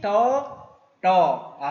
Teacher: 입 천장 쪽에 붙어가지고 이렇게 더 하다 보니까 이 위치가 바로 리을 우리가 리을 발음하는 발음 위치에 혀가 닿는 부분과 똑같습니다. 그러다 보니까 캄보디아의 디귿 이 초성은 약간 리을이 섞여 있는 그런 초성처럼 들립니다. 그래서 이렇게 약간 그 콧소리 약간 사이 소리가 먼저 들어간 다음에 이렇게 리을이 약간 섞여 있는 소리가 나는 거죠. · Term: 디귿 초성